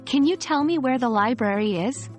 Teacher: your voice should fall at the end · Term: falling intonation